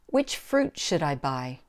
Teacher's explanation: because it's a wh question which fruit should I buy here fruit is the important word so that's the word that gets the stress